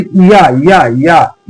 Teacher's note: इ प्लस आ दो तीन बार बोलेंगे तो या की आवाज या या या की आवाज निकलने लगेगी। इसलिए हम इन्हें अर्ध स्वर भी कहते हैं।